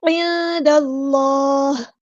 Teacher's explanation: نون ساکن کی آواز کو یہاں پہ چھپا دینا، اخفا ہوگا، دال کو لام کے ساتھ ملا دینا، حمزۃ الوصل ہمارا ڈراپ ہو جائے گا.